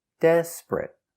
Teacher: Two syllables. The stress is on the first syllable. Desperate. Not three syllables.